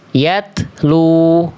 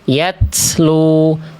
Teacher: Jadi yatlu, bukan yatslu, jangan ada bunyi s.